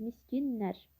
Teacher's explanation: Miskinlər sözündə K samiti G kimi tələffüz olunur.